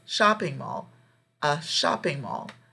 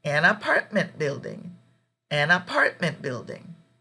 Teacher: when we use an and then we go to the next word we actually link the sounds